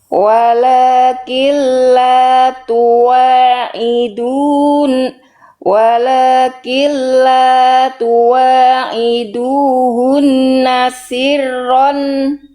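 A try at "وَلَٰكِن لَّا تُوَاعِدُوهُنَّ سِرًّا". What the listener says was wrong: Ro-nya itu udah lebih bagus, tapi nun tasydidnya tahan. Ya, rohnya seperti tadi sudah lebih bagus.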